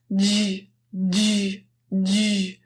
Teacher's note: So let's get into the j sound. This sound is an affricate, just means there are two sounds. It starts with a stop D sound. · the tip of your tongue touches the alveolar ridge or just behind your top front teeth. Then your tongue slides back and makes a friction sound